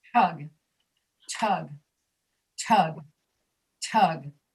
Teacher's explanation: You're saying the vowel sound right, but you weren't putting air after the T.